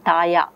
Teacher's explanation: La is retroflex lateral, is replaced by the semi-vowel ya, taya, which is simpler. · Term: gliding